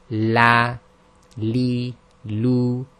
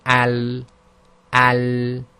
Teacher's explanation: the pressure is at the front, around those upper top teeth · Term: lam